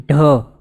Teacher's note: ઢ બોલવા માટે આની અંદર વિશેષ પ્રાણ પૂરવું જરૂરી છે ત્યારે અંદરથી આપણે બોલી શકીએ એવું છે એમ જ સિમ્પલી બોલવા